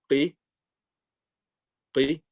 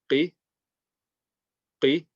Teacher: The letter Qaf, the last heavy letter, is going to be qi, qi. And again, this is from the back end of the mouth and not the throat